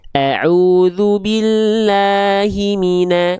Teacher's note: Sehingga kalau kita baca taawud misalnya, setiap vokal a-nya kalau fathahnya vokal a tipis ya